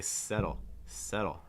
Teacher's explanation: I don't actually need to make contact for the D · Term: fast D sound